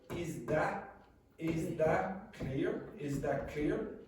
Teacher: what I would generally do is make this T a glottal stop.